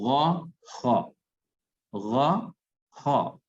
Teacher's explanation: اب ہا اور ہا میں تمیز آپ کے سامنے آ گئی، فرق آ گیا، تو ان دونوں میں فرق کرنا ضروری ہے. اس کے بعد جو 2 حرف باقی بچے، غین اور خا، یہ ادا ہوتے ہیں حلق کا وہ حصہ جو منہ کی طرف ہے.